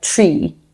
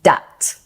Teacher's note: TH sounds become a T or a D sound.